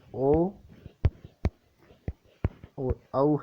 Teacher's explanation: जो ओ और औ है उनका उच्चारण स्थान कंठोष्ठ होता है। कैसे होता है दोस्तों, देखिए ए प्लस ऊ छोटा या बड़ा आ सकता है और इससे बनता है ओ।